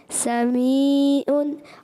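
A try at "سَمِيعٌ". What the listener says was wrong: سمیع عین کی آواز. اچھا اور اینڈ کو دوبارہ دونوں عینوں کو کلیئر کریں.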